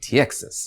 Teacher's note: you're putting in a little y to kind of wedge that vowel apart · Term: glide sounds